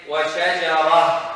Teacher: It will change to a ha, because you have a ta.